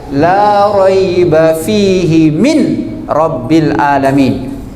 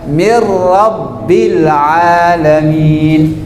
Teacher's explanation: Tetapi kaidah bacanya huruf ya dan huruf ro bagian dari bila guna, maka dibaca mir rabbil alamin. Nun tidak dibaca lagi tapi disambungkan ke huruf ra.